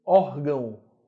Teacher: Nota que a letra O tem som de U. Órgão, né? É fraco.